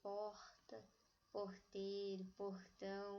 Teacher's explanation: aqui no interior nós temos esse r retroflexo